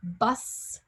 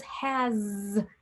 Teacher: at the end of words, they're pronounced differently, like bus has an S, but so does has, which has a Z sound